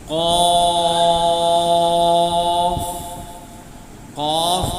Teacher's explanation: قاف، قاف کا مخرج اقصی لسان، یعنی زبان کا آخری حصہ، جب ہم زبان کے آخری حصے کو اس کے مقابل اوپر کے نرم تالو سے لگاتے ہیں تو قاف ادا ہوتا ہے۔